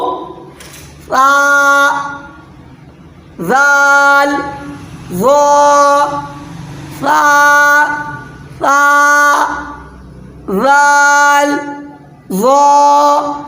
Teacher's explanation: یہ سٹی والی جو آواز آتی ہے سا زال وا میں نہیں آنی چاہیے۔ ایک دم جتنا صاف ہوگا اتنا آپ کا جو ہے نا یہ تینوں حرف کا مخرج صحیح ہوگا، اتنا بیٹر ادائیگی ہوگی۔